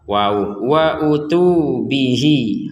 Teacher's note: bihi kita baca panjang 2 harokat karena ada ya. Ada ya kecil.